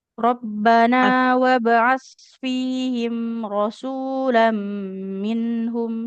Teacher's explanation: huruf sa enggak boleh ada desisnya ya. Makhrajnya ujung lidahnya tambelkan ke ujung gigi atas.